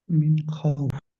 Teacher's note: নুন সাকিনকে বিনা গুণনায় জাহির করে পড়িতে হবে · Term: ইজাহারে হালকি